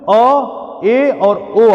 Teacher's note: अर्धविवृत में अ, ए और ओ आएगा। इसमें मुख उतना ज्यादा विवृत के अपेक्षा कुछ कम खुलता है